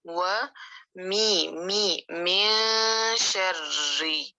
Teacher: اذا وقب، واو کے لیے ہونٹ گول، و می من شرری، نون کو چھپانا ہے، اخفا کہتے ہیں اسے چھپانے کو